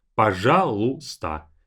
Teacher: one trick here, this y is not pronounced.